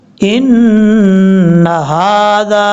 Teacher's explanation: نون کے اوپر شد کی وجہ سے غنہ کریں گے